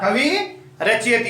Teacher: विसर्ग हट जाएगा, लेकिन जो विसर्ग के पहले जो स्वर है वो क्या हो जाएगा, दीर्घ हो जाएगा। तो यहाँ व के साथ छोटी की मात्रा है तो यहाँ व के साथ बड़ी हो जाएगी।